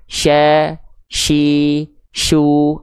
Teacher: Tengah lidahnya untuk huruf shin diapain, Bang? Tengah lidahnya diarahkan ke langit-langit, di atasnya persis dan tersebar udara dari mulut. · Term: tafasyi